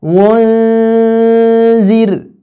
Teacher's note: Maka nun itu menuju ke makhrajnya huruf zal.